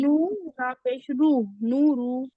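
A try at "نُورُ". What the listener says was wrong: नू को आपने खींचा ही नहीं वाव मद्दा को। थोड़ा सा और कीजिए। नूरू नूरू वाव मद्दा को कीजिए और हरकत को बिल्कुल मत कीजिए।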